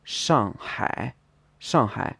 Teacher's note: be n second tone first tone Shanghai would be shangai shangai fourth tone and third tone